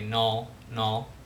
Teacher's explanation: that strut vowel is pronounced, you know, with a backer allophone. There's also a little rounding involved with dark L